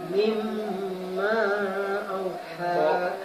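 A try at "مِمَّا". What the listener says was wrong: Ma-nya kurang panjang. Apa mim itu? Mim bertasjid gunnah.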